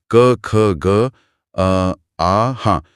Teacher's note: यह आवाज होठ या जीभ के आगे वाले हिस्से से नहीं आ रही। यह बिल्कुल गले के पिछले हिस्से से आ रही है। हां, गले में एक हल्का सा खिंचाव महसूस होता है। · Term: कंठ